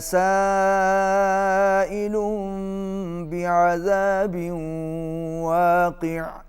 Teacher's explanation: بعذاب واقع، یہاں پر ادغام مع الغنہ ہے، تنوین کے بعد واو حروف یرملون میں سے آ رہی ہے، اس کو ملا کے پڑھیے